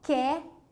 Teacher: Esse E viradinho, depois você vai saber, é o som de E aberto, porque tem o E que é fechado e tem o E que é aberto.